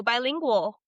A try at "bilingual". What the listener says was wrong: You said langual. Bilingual.